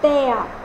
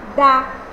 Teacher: De mais o não vai ficar del, vai ficar dó. Então eu tenho a perda fonética da minha vogal E.